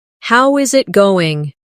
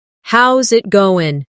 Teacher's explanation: The is disappears and the final G in going often softens. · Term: connected speech